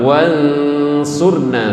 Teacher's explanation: Jadi ketika mendengungkan suara nunnya itu sudah menyongsong ke shad. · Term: ausato